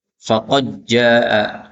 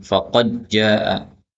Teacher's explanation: Ini boleh idgham, dalnya hilang menjadi jim.